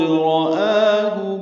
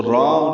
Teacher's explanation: آ کھڑا زبر قائم مقام مد اصلی، دو حرکات لمبا کریں گے